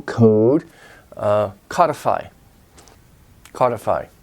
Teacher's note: mode is long Oh mode but it becomes short and modify